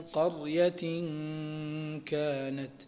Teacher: ونون التنوين قبل الكاف من قرية كانت، تخفى في الكاف وتكون فيها غنة بمقدار حركتين، وتكون الغنة مرققة لمجيئها قبل حرف مرقق وهو الكاف